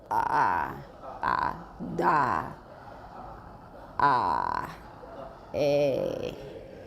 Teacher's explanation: vocal folds held tightly together, posteriorly, but vibrating usually at a very low rate. That means 它的频率低到你可以数得出来一秒钟有几下. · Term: creaks